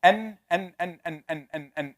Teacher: the tip of the tongue touching behind the top of the mouth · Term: noon